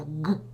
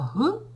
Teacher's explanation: звук г він гортаний десь Там глибоко народжується і Ґ десь ближче сюди у горлі так десь отут народжується